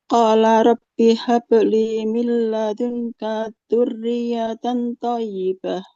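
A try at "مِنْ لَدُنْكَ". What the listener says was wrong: Milladungkah. Di sini kafnya nggak boleh panjang. Huruf berharokat fathah panjang kalau ada alif ya di depannya. Karena setelah kaf tidak ada alifnya maka jangan dipanjangkan. Qala rabbi habli min ladunka dzurriyyatan thayyibah.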